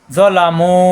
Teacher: জ যা হবে না, জ মোটা হবে